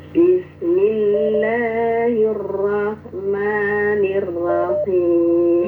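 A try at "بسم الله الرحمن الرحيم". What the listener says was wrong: ini dikurangi getaran rnya kebanyakan.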